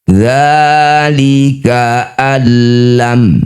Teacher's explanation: Dzalika allam, nun sukun bertemu lam disebut bacaan namanya idgham bila gunnah. Masukkan bunyi nun pada lam bila gunnah tanpa mengalirkan suara melalui rongga hidung atau tanpa didengungkan.